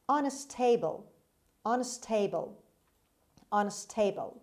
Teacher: The stress is on S and on the second syllable. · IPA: /ʌnˈsteɪbəl/